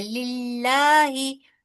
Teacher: यहाँ पर इसमें जलाला बारीक पढ़ा जाएगा क्योंकि लाम के नीचे जेर है